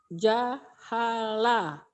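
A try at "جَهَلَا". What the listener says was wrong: Ini panjang nggak yang ujungnya? Panjang. Tapi Bu tadi bacanya pendek.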